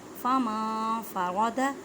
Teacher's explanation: فما فرض نون ساکن کے بعد فا کے حروف اکفا کا قاعدہ کریں مینس کے نون ساکن کی آواز کو چھپانا ہے، فمن نہیں کہنا۔